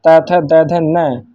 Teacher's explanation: चौथा है ता वर्ग, त, थ, द, ध, न। इसका उच्चारण स्थान है दंत मतलब दांतों से।